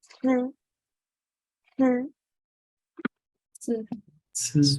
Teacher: when you pronounce 吃, your tip of your tongue is very close to your upper teeth